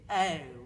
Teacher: o if you're a heightened British person you'd say o and if you're a lower class British person You' say oh with a lot of Glide there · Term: dip thong O